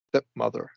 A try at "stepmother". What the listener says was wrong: When you were reading, you said stepmother instead of a full short e articulation. Stepmother. you when you read, it sounded like a short I stepmother instead of stepmother. Do that full shorty.